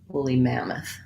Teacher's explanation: on the mam syllable that has the ah vowel and then this letter o is unstressed and so it says vowel schwa the uh sound